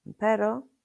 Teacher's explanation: Tap your tongue quickly and lightly against the roof of your mouth. It's as if you were going to roll the R but changed your mind. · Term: soft R